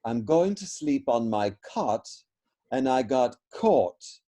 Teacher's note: So those were originally two different vowels, but in Californiaese, they have been merged together. So one of those vowels has been removed.